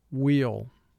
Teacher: [Music] finally wh represents the sound as in the word wheel some people pronounce wh with a slight h sound in front but most people now only use the w sound